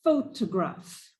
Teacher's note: the stress of that word is on the first syllable